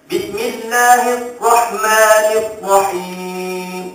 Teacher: berlaku kesilapan apabila kita tahankan suara sebelum kita sebut huruf ra. Maka bila tahankan suara dia akan lahir huruf ta. Dia akan jadi macam ni.